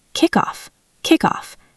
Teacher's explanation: The KK sound at the end of kick is strong, and it links directly to the vowel O in off